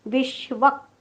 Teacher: जोडाक्षराचा पहिला अर्धा भाग. पोटफोड्या श म्हणताना जीभ उलटी टाळ्याकडे जाते, पण टाळ्याला चिकटत नाही